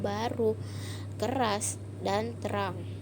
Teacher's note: fonem R dapat direalisasikan sebagai bunyi R yang tidak bergoyang atau bergetar